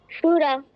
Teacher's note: তালব্যস দন্তসর মত উচ্চারণ করা যাবে না